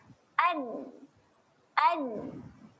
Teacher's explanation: dikembalikan kepada makhraj asal, iaitu hujung lidah naikkan sahaja ke gusi atas. Jadi bunyi dia ialah an. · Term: nun bertanda sukun